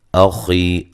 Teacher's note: من نون ساکن کا اظہار ہے، غنہ نہیں کریں گے. اخی حمزہ کو تحقیق سے واضح طور پہ پڑھیں گے، نرم نہیں پڑھیں گے